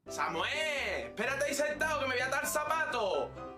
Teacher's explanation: Sesean en las zonas de color verde, pronunciando todos los sonidos, tanto S como Z como S. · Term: seseo